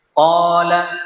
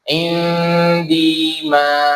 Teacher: Panjangnya dibaca qasar atau 2 harokat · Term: mad asli